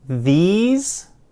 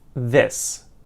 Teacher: You'll notice with the last one too, it's not just the vowels, but it's also in the word these. It ends in more of a z sound, whereas this ends in a more s sound.